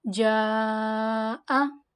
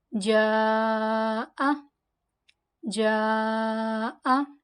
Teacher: If Hamza is in the same word, Madda will be called Madda Muttasil and it is prolonged equals to 4 alif.